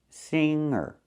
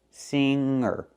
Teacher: we do not pronounce a hard G. We say singer, not singer.